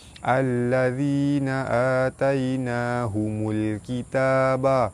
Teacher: Baris atas bertemu ya di tengah kalimah, hukumnya mad lin. Cara baca dia dibaca lembut dan panjang 2 harakat. · Alif lam bertemu lam, alif lam syamsiah, cara baca dia terus masuk ke lam yang kedua.